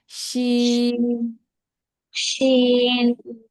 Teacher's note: শিনটা হচ্ছে জিহ্বার মধ্যখানটা জাস্ট উপরে লাগবে তালুর সাথে।